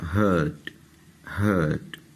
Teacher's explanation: اس میں آر کی ساؤنڈ آپ دیکھ رہے ہیں کہ بہت زیادہ واضح کر کے نہیں اس کو پڑھنا